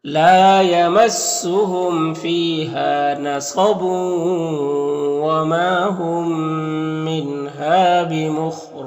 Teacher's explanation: میم ساکن کے بعد میم ہے تو یہ ادغام شفوی ہوگا